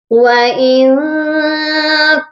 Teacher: اس نون ساکن پر اخفا ہوگا